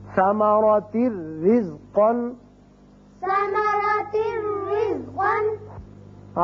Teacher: را تنوین کی وجہ سے ایک زیر پڑی جائے گی اور صرف را ہوگا، یہاں نون کی آواز نہیں آئے گی. ثمرات رزقا. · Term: بغیر غنہ